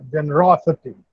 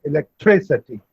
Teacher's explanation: words ending in ity take the primary accent on the Anti-penultimate syllable.